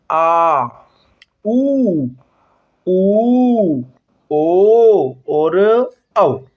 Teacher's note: वे स्वर जिनके उच्चारण में जिव्या का पिछला भाग सक्रिय रहता है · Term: पश स्वर